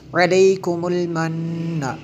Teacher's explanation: دیکھیں نون میں شدد ہے اس لیے غنہ کیا۔